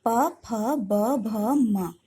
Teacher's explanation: इन सब का उच्चारण करते समय होंठ आपस में लगते हैं, तो इन्हें ओष्ठ्य व्यंजन भी कहते हैं। ये सभी स्पर्श व्यंजन हैं।